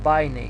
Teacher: Акцентиран е дифтонгот ај и затоа е напишано на акцентот е напишан на вториот дел од дифтонгот, но акцентот го читаме на првиот дел од дифтонгот, на алфата, на а. Значи читаме бајнеј.